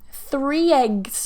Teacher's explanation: we've got three which ends with an e smiley vowel e